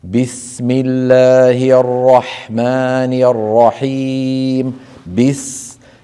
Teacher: هي حرف رخو، نحرص على مطه قليلا إن كان ساكنا